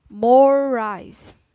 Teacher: And I will give you more example in this phrase, more rice is a continuous consonant. When R is linked into another R, it's pronounced for more time. So the R of this phrase, more rice, is said for a longer durations.